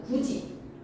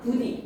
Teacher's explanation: 치조음이었던 애가 고모음의 이를 만나니까 위치를 가까이 당겨야지만 편하게 발음할 수가 있어. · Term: 구개음화